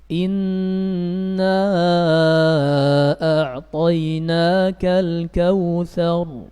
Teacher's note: Hamzanya pada al tidak dibaca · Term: hamzatul wasl